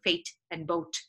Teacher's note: very often you would hear Indian people saying fate and boat with like these short vowels